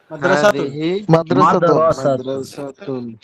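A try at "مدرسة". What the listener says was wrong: এখানে মাদরা যদি লম্বা করেন তাহলে একটা আলিফ চলে আসলো, মাদ্রাসাতুন, বুঝছেন? মাদ্রাসাতুন পড়লে ভুল হবে, এটা আরবি শব্দটা শুদ্ধ হবে না।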